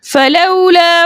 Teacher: वावलीन को देर हरकत की देर लगाकर नरमी और सहूलत के साथ पढ़ते हैं।